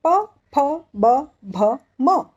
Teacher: इसे कहते हैं ओष्ठ्य, क्योंकि जब हम इनका उच्चार करते हैं तो हम हमारे होठों का प्रयोग करते हैं